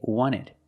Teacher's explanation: You have NT in the middle, the T is silent.